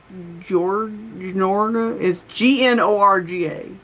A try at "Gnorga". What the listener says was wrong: It looks like that should be a silent G, but it's not. It's actually Gnorga. That's how you say her name, yes.